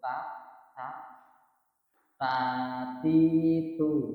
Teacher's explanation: jadi ada ada percikan napas yang keluar sedikit ya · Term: huruf ta